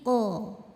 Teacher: pangkal lidah naik lidah terasa lebih tegang · Ko dari pangkal lidah keluarnya. Pangkal lidah kita ngangkat ya. Ko nggak ada anginnya, tidak juga terlalu dalam.